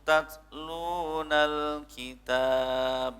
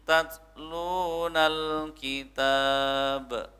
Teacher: ada desisi sedikit di harf ta-nya ya. Ya, tetapi bukan qalqalah, tetapi ada sedikit ya.